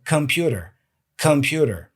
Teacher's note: For many years, I said computer or computer, but it's not con, it's come, schwa sound, k. So computer, computer.